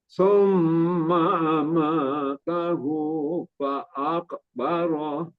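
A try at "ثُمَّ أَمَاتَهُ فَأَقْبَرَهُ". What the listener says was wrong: Qafnya kurang sempurna, qalqalahnya. Ulang sekali lagi. Summa amatahu fa'aqbarah. Hu-nya juga kurang tadi. Summa amatahu fa'aqbarah.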